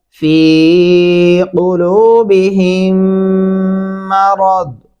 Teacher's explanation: यहाँ पे आप गुन्ना भी करेंगे, रा और दौद को मोटा भी पढ़ेंगे